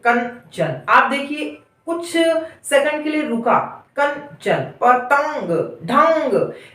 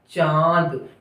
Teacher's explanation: अनुस्वार में जब हम कुछ बोलते हैं तो जो मुख में है यानी मुंह के अंदर जो श्वास यानी हवा है वो अवरुद्ध होती है।